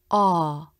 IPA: ɔ: